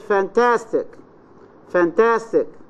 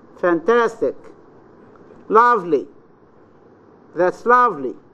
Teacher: rise fall, where the voice starts in a medium pitch or low pitch, then rises and then falls.